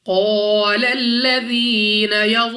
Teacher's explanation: قاف مستعلیہ میں سے ہے، موٹا پڑھیں گے منہ اور آواز کو کھول کر. اس کے ساتھ الف مدہ ہے، 2 سیکنڈ تک لمبا کرنا ہے.